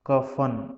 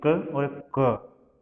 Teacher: ये जो कंठ है उसकी थोड़ी गहराई से इनका उच्चारण करना पड़ता है